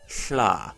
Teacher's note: the lateral fricative schla this is a pretty rare sound but it can be found in Welsh Zulu and Navajo